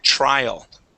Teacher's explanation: I like to have people think of that as one sound instead of a t and an R separate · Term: CH sound